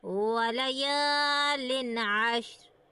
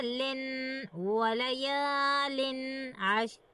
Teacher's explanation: ان 6 حروف میں سے ایک حروف یہاں پر موجود ہے، اسی لیے یہاں پر اظہار حلقی کا قاعدہ ہو رہا ہے، اور ہم یہاں پر اظہار کر کے پڑھیں گے نہ کہ غنہ کر کے۔ غنہ کر کے پڑھنا غلط ہوگا۔